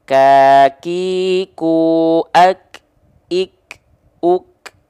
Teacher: Dia hanya berupa percikan nafas saja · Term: huruf kaf